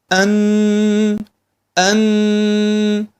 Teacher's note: حرف النون يخرج من طرف اللسان اول شيء مع اللثه العليا ومع الانف اللي هو سمى عند علماء التجويد الخيشوم فلما نريد ان نخرج